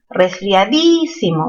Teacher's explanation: Resfriadísimo, mayor fuerza en di, esdrújula